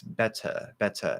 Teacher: they use that schwa sound they don't say er